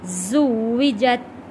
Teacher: زا کو سختی کے ساتھ پڑھیں گے،